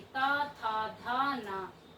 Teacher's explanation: दंत से ता, जीभ दांतों से लगी